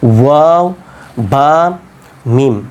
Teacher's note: এটাকে বলা হয় কি যে দুই ঠোঁট থেকেই নাকি উচ্চারিত হয় এটা। তাহলে তিনটা উচ্চারণ হয় দুই ঠোঁট থেকে, সেটা হচ্ছে ওয়াও, বা, মিম।